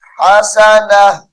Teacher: हसनतुन है, वक्फ की हालत में हसना पढ़ेंगे।